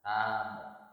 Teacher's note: Jadi ta-nya karena ada alif, sebelumnya ada harokat fathah. Nah, ini termasuk huruf mad, maka dibaca panjang 2 ketukan.